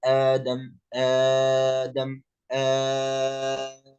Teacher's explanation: إمام ورش يمد مد البدل حركتين أو 4 أو 6